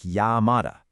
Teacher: that double L isn't an L sound at all. It's a soft ya sound, like llamada.